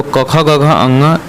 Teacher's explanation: ये क वर्ग में है, जो कंठ से बोला जाता है।